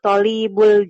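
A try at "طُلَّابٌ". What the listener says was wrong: Bukan tolib. Ini bukan tolib Bu bacanya. Nah, kalau tolib to-nya yang panjang. Ada alif. Kalau tulab, lamnya yang panjang.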